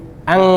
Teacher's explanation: Bunyi ngeh, ang gitu. Pertemuan pangkal lidah dengan langit-langit belakang. Ya, itu asal bunyi ngeh.